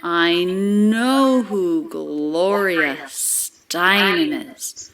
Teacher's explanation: a thought group with three stressed syllables